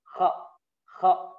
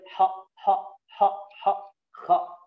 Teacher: Nah, suaranya sedikit menebal. Karena ghain dan kha merupakan huruf tebal. Tidak boleh gha.